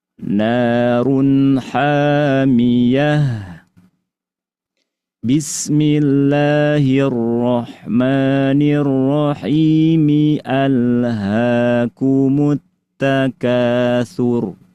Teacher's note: Cara yang ketiga adalah akhir surat berhenti basmalahnya disambung. Akhir suratnya kita baca waqaf. Sedangkan basmalah dengan awal ayat berikutnya dibaca wasol.